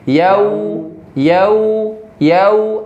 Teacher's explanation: Kemudian di yau, ya-nya sempurnakan ya, masuk ke waw sukun, di situ ada sifat lin. Jadi suaranya lembut. Jadi agak berjalan sedikit.